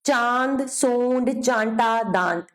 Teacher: अनुनासिक में ध्वनि नाक और मुख दोनों से निकलती है